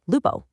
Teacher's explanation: The final m in lupum was completely lost to history. And that heavy u softened into this bright open o, giving us the modern Italian loop.